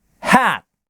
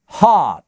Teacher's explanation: Здесь язык чуть оттягивается назад, и для английского произношения это критично, потому что переднее «а» и заднее «а» — это разные звуки, которые меняют смысл слова